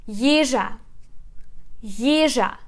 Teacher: So we put stress on the first syllable.